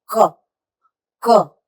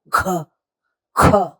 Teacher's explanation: क में मुंह से हवा नहीं निकलती जब क को हवा के साथ बोलते हैं तब वो ख ख तो वो ख बन जाता है क की जगह ख